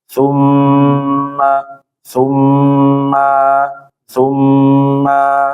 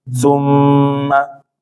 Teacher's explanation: Padahal seharusnya dia pendek sum yang ditahan cuma M-nya doang